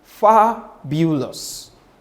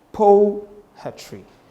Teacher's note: So it means you have one stressed first, and then two that is unstressed. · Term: dactylic meter